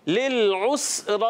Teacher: सीन को भी नहीं हिलाएंगे, रा को पुर रखेंगे